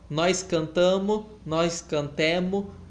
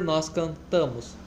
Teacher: Na morfologia, a gente tem a perda do S, da desinência das primeiras pessoas no plural.